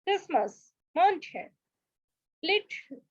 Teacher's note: When talking fast, silent letters like T are very lightly pronounced in words like Christmas, mountain, and little.